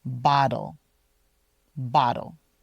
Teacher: Bottle is spelled with two T's, but it sounds a lot like a D when we're saying it naturally